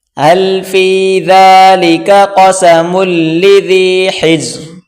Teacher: یہ چھوٹی کاف اس کو باریک کر کے پڑھیں گے اور آگے بڑی قاف اس کو موٹا کریں گے